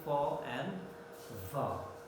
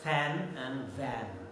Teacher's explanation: since the passage is very narrow, there is friction sound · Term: labiodental fricative